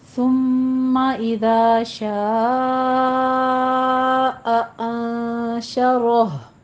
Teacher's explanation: اذا میں دال نرمی سے، سیٹی کی آواز نہیں آنی چاہیے